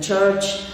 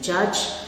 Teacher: voiceless CH as in church and voiced one J when you say judge